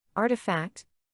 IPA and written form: ˈɑːr.təˌfækt (Artifact)